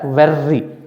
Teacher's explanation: some speakers of british english pronounced r in the word very as a flap very it sounds like a very fast d most american speakers